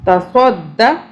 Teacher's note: ایک د جو صاد دال زبر صد ہم پڑھ رہے ہیں، دال کی ہم نے آواز 2 مرتبہ بنانی ہے کیونکہ اس کے اوپر تشدید ہے